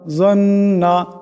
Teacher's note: এখানে নুনের উপর তসদিদ আছে, নুনকে এক আলিফ পরিমাণ গুণনা করিয়া পড়তে হবে